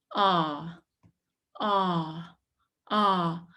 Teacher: your tongue stays down but quite in the back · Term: short a